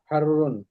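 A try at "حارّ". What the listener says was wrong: হারুন একটু টান হবে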